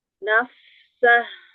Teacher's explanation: kalau sendiri kedengeran hamesnya pada fa sukunnya. Ta'afufnya jelas, tapi ketika disambung hilang.